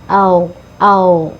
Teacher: gain ini ada di tenggorokan bagian atas jadi jangan sampai dipantulkan